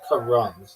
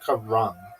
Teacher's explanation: Not even like Ram, it's Karum. Sounds like car run. Emphasis on the first syllable.